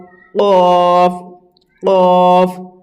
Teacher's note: কফ কলকলার মধ্যে পড়ে এই কফ অক্ষরটি। তো কফ হচ্ছে মোটা আওয়াজে